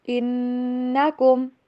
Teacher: نون کے اوپر غنہ اور میم کے اوپر بالکل بھی غنہ نہیں کرنا